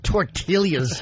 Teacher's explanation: There was actually a break between his L's.